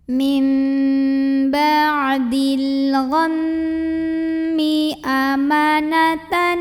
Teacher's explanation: maka cara bacanya didengungkan, jadi bunyi M-nya tahan sampai bergetar halus ke hidung kurang lebih 2 harokat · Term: gunnah musyaddadah